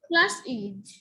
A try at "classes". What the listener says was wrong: উচ্চারণ ঠিক রাখতে হবে। তুমি আমি আইজেড এর উচ্চারণ কথা বলাতে একবারে ভেঙ্গে এটা আলাদা উচ্চারণ করো বাবা, এরকম হবে না। ক্লাস ক্লাসেস, বাস বাসেস, ওয়াশ ওয়াচেস, এরকম।